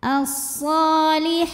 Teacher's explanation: ada baris fathah panjang di atas huruf ha dibaca panjang han-nya dua harakat